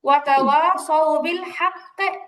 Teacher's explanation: যখন এখানে ওয়াকফ করবেন কফে কলকলা হবে, আর কফের কলকলা হয় জবরের মতো।